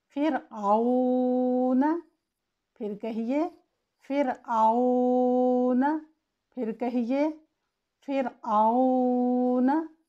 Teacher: रॉ साकिन से पहले कसरा हो तो भी रॉ को बारीक पढ़ते हैं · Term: रॉ की तरक़ीक़